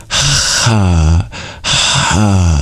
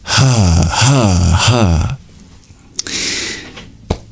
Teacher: The voice doesn't come in until after it goes into the vowel. But in Sanskrit, the voice comes immediately.